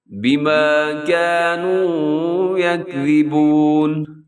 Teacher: اب یہ جو لفظ لکھا ہوا ہے نا یکذبون، اسے تو بہت سارے لوگ یکذبون کر دیتے ہیں، یکذبون. یہاں زا نہیں بلکہ ذا لکھا ہوا ہے جس کو نرم پڑھتے ہیں، جس میں سیٹی نہیں ہوتی